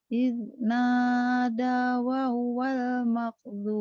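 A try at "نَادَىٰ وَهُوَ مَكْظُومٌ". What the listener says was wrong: Wa huwa nggak ada walnya.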